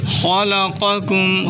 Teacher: خلقکم، خا کو موٹا کریں، قاف کو بھی موٹا کریں